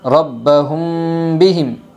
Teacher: اخفاء شفوی ہوگا، میم ساکن کے بعد با آئی ہے، اس لیے میم ساکن کی آواز کو غنہ کے ساتھ پڑھے گے، غنہ اور اخفاء کے ساتھ پڑھے گے۔